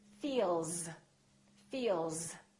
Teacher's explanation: Feel, vibration in my vocal cords. That's a voiced sound. Therefore, the S sounds like Z